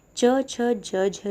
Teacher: च छ ज झ जो है तालव्य व्यंजन है